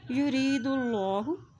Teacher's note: अल्लाह के नाम से पहले पेश आ गया है तो अल्लाह का नाम मोटा अदा किया जाएगा।